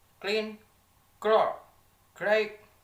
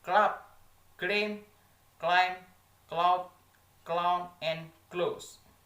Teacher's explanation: a voiceless velar stop sound K